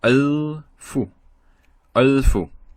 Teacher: So here we have l, just l without any vowel. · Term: sukun